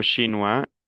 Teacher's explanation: Pronuncio la S. Chinois, OI se pronuncia WA, las S finales no se pronuncian. Entonces digo chinois, el femenino es chinoise, chinois, chinoise.